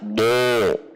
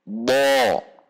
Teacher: Huruf menjadi tebal. Dan terdengarnya o bukan dengan di-o-kan tetapi dengan menegangkan pangkal lidah sehingga tidak perlu dengan membulatkan bibir. Tidak do, tapi bo.